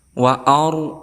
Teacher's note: Wa ar, kemudian di sini ra sukun sebelumnya berharakat fathah, maka kita hukumi sebagai tafkhim, artinya tebal